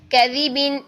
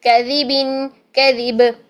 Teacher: زال کے مخرج کے لیے زبان کی نوک سامنے والے اوپر کے دونوں دانتوں کے کناروں سے لگانا ہے، کناروں سے. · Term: زال کا مخرج